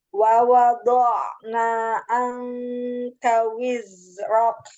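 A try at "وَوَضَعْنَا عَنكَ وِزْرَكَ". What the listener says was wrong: Iya. Kafnya coba disempurnakan lagi. Wa wada'na anka wizrak.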